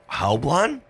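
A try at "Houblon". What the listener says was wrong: Oblon. The H is silent.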